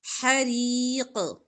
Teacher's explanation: قاف پر وقف کریں گے تو قاف کی زیر نہیں پڑیں گے کلکلا ہوگا